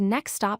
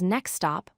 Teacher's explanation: where the T in next disappears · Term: T dropping